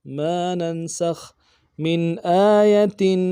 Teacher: میم کو نون ساکن سے ملانا ہے، یہاں پہ نون ساکن مظہر ہوگا